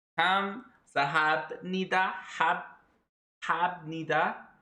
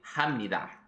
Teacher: the syllable hop ends with a piup, and it's followed by a nian in the next syllable. It becomes a mium.